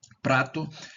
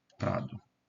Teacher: a gente mudou aqui o T, né? Que é surda por um D, que é sonora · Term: sonorização